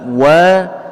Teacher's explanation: Huruf Waw disini tipis tidak dibaca tebal